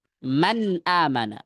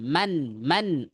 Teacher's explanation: Maka ujung lidah kita nempelnya ke langit-langit atas tempatnya nun. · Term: izhar halqi